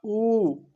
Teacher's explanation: भाषा विज्ञान की दृष्टि से ऊ के उच्चारण में जीभ का पश्च भाग काम करता है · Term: पश्चसंवृत स्वर